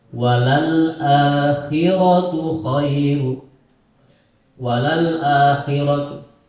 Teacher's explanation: membacanya harus walal a, hamzahnya harus jelas. Walal akhiratu khairu, walal akhiratu.